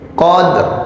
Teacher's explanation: Jadi ro-nya itu cuma pantulan lidah aja tuh.